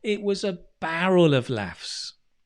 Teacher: Notice how we stress barrel. There's real strong stress on that.